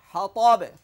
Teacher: বায়ে জজম হবে ওয়াকফের কারণে, জজম হলে কলকলা হবে।